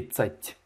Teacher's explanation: Tu n'as pas mouillé le T. Hein, le T, à la fin du T, il y a un signe mou.